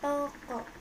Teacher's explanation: vokal belakang sedang atas bundar semi tertutup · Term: vokal o, Vokal O